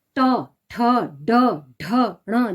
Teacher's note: मूर्धय, कठोर तालु के अगले भाग से। जैसे कठोर तालु से हो गया ट, ठ, ड, ढ, ण, जो मतलब पूरी आवाज तालु के साथ ज्यादा, जो जीवा है वह ज्यादा टच हो रही है ऊपर तालु से, तो इसे हम कठोर तालु के अगले भाग से जो हम इसे इन शब्दों को बोल रहे हैं।